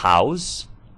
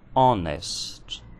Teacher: A palavra house possui um H aspirado, como se fosse uma letra R. Já a palavra honest possui um H mudo.